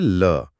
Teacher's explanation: फिर है ल जिसे पार्श्विक कहते हैं। इसे बोलते समय जीभ मुंह के बीचों-बीच एक खंभे की तरह खड़ी हो जाती है और हवा उसके दोनों साइड से यानी बगल से निकल जाती है।